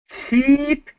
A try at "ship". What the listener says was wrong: Ship, ship, ship. Not sheep, but ship. Ship.